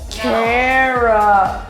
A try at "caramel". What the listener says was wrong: You drop the A. It's a silent A. right, caramel.